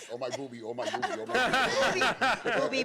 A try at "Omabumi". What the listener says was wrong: Booby. It's not booby. It's boomy.